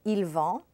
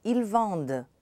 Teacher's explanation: In the plural, you hear the D, vende. The ENT is not pronounced.